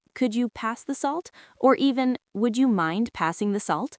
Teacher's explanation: The tone is soft, often rising at the end.